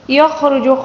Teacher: خا کو پر پڑھیں گے، را کو بھی پر پڑھیں گے، کیونکہ را کے اوپر جب بھی پیش یا زبر یا پیش آ جائے تو اس کو پر پڑھنا ہوگا، ٹھیک ہے۔